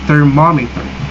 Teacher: In the thermometer, the second syllable is stressed.